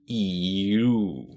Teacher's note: move from the top front to the top back e uh you may also notice what's going on with your lips they are gradually closing into a little circle · ooh so if you gradually slip from E to o e your tongue will move from the top front to the top back